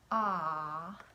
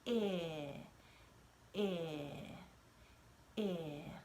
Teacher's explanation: the shape of my mouth is a little bit closed when I say I? You can see my tongue a little bit, but my mouth is not open like it is when I say ah